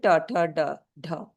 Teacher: मूर्धन्य साउंड जो होती हैं जो मूर्धा से निकलती हैं। Curling the tip of tongue. जब टंग को हम थोड़ा सा टंग की जो टिप है उसको कर्ल करके हार्ड लेयर पे जो दांत के पीछे है उस पे टच करते हैं तो वह रिट्रोफ्लेक्स साउंड होती है जिसे कहते हैं मूर्धन्य साउंड।